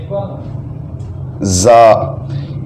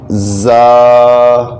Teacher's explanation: یہ تھوڑی سی سختی سے ادا ہوتا ہے، تو اس کو ہم اس طرح پڑھیں گے زا، تھوڑا لمبا بھی کریں گے